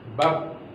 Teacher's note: Kalau bab berhenti begitu saja tuh, tidak ada durasi suara yang keluar. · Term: syiddah